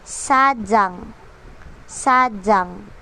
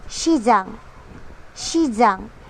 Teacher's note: J po ang sound kasi nasa gitna po ng vowels.